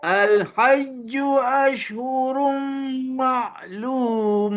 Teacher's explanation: kemaskan huruf shin tu bagi ada keluar angin menyembur